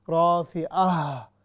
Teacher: جو عین ہے ہم نے اس کو حمزہ نہیں بنانا، ہم نے اس کی بھی جو پوری ادائیگی ہے وہ کرنی ہے